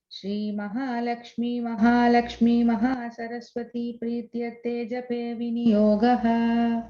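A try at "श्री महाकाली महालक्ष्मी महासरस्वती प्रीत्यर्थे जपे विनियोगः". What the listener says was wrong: I think Mahakali you forgot. You said Mahalakshmi twice, but that's okay.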